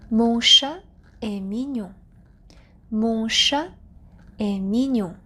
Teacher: So there's no liaison between chat and the verb est because chat is a singular noun.